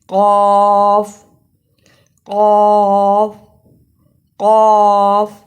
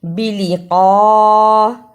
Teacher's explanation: قاف زبر بڑی مد قا، اسے کا نہیں پڑھ سکتے، قاف کی جگہ پر کاف کی آواز نہیں آنی چاہیے، قاف کو موٹا پڑھنا ہے